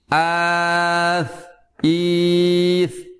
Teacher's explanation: Huruf sa, huruf yang rendah atau turun atau istifal, menurunkan pangkal lidah kita.